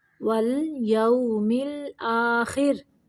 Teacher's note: را کو ساکن رکھتے ہوئے باریک پڑھنا ہے